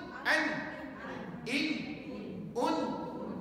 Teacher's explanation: Dia guna hujung lidah dan juga guna pangkal hidung. Dua anggota.